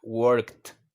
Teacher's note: Un sonido de T al final. En vez de agregar una sílaba extra, nada más agregamos ese sonido de T.